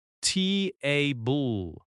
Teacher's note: Strong first syllable, softer second syllable.